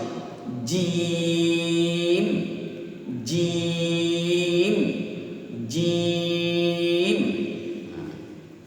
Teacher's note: জিহ্বার মাঝের অংশ যেন তালুর সাথে মিলে একটা মিষ্টিতে উচ্চারণ হয়, একটা মিষ্টি সাউন্ড বের হয় যেন।